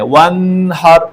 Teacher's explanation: نون ساکن ہے اس کے بعد ہا ہے تو اب اس کو غنہ کے بغیر پڑھنا ہے